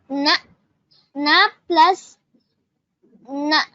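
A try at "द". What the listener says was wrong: that is not na. you see that there is no dot on the side, right? So it is dakara, which is the third letter of the ta varga. Ta, tha, da. This is not na. The second letter is da, dakara.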